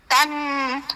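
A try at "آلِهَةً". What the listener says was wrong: না, ধরে রাখা যাবে না, তান।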